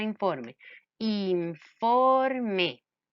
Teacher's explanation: esa palabra informe que tiene el acento en la penúltima sílaba